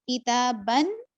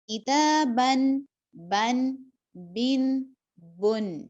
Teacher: آخر میں دیکھیں میری آواز نون پر ٹھہر رہی ہے، نون پر رک رہی ہے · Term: نون کی آواز